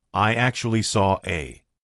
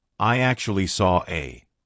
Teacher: the intrusive R is when we insert an R to link to the next word, even though there's not an R written there. We just put one in.